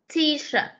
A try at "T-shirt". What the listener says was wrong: Cái từ shirt con phải thêm đuôi ti ở cuối câu. Đây nè. T-shirt.